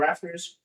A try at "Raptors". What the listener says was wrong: You added the F. Raptors.